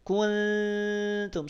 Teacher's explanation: saat kita menyamarkan Nun bertemu dengan huruf ta lidah kita ujung lidah kita sudah bersiap untuk mengucapkan huruf ta · Ujung lidah kita sudah mengarah ke pangkal gigi seri atas, tempat keluarnya huruf ta. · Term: nun sukun